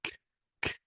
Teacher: If you want to say K and put your finger on the throat, there will be no vibration. And because there will be no vibration, it is voiceless.